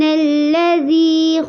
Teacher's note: اس آیت کو دیکھیے، سبحان الذی میں با پہ قلقلہ کرنا ہے، ہا کو لمبا کرنا ہے، الذی میں یا ساکن سے پہلے زیر ہے، اس کو بھی لمبا کرنا ہے